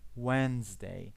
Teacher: We do not pronounce the D.